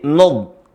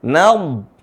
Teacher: perhatikan jangan sampai Nun ikut tebal